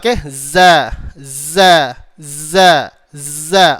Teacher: Dan zai dia ada satu sifat tunggal, iaitu sifat safir. Apa? Safir, desiran suara ataupun suara bersiul ataupun suara berdesir. Seperti suara burung, ada kata seperti suara z, gitulah.